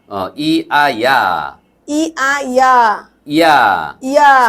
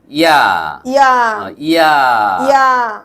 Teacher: ইয়া উচ্চারণ করার সময় ই কে হ্রস্ব করে আ কে দীর্ঘ করে উচ্চারণ করুন।